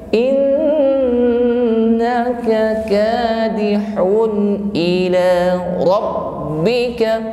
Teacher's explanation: Ada nun yang bertasydid, maka kita tahan sampai mengeluarkan bunyi dengung. Bukan innaka, tetapi innaka kadihun ila rabbika.